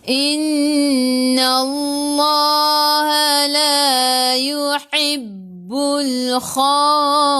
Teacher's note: nun ada sabdu tekan ke dalam nun dan dengan 2 harakat wajibul gunnah. Sebelum Allah ada baris atas kena baca tebal.